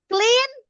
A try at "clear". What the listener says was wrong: Clear. Guys, not clean, but clear. Clear.